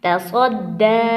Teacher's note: اب دال کے اوپر کھڑی زبر آئی ہے، 2 الف کے برابر ہم دال کو لمبا کریں گے